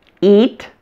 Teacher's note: The most obvious difference you see is that my mouth is much wider when I say the long E vowel in eat. My lips are spread like I'm smiling.